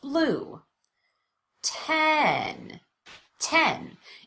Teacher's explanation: The vowel is louder and longer, and there's an obvious change in pitch. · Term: primary stress